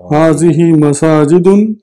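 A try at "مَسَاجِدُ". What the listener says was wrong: हाज़िहि मसाजिदु पढ़ेंगे अब हम। अपनी जुबान को बताइए, मस्जिदुन की जमा मसाजिदु, मसाजिदुन नहीं, क्यों? जुबान को बताइए आप।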